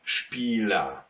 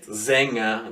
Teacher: it's basically an ah here in the end of the word